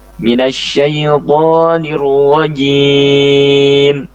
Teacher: harus dijaga jimnya supaya tidak keluar desis. Sebenarnya desisnya semuanya itu tidak parah gitu ya, hanya sedikit sekali desisnya.